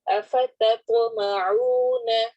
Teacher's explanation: سورۃ البقرہ آیا نمبر 75 سے، اعوذ باللہ من الشیطان الرجیم، بسم اللہ الرحمن الرحیم، افتطمعون، تا اور طا دونوں قریب کے مخرج سے ہیں، لیکن تا باریک پڑھا جاتا ہے اور طا موٹا، اس اعتبار سے ہم نے خیال کرنا ہے۔ پہلے تا فلیٹ ہمارے ہونٹ رہیں گے، طا میں تھوڑے سے ہلکے سے راؤنڈ ہوں گے، تت اور طا چونکہ کلکلا والے حروف میں سے ہے اس لیے یہاں پر کلکلا بھی ہوگا۔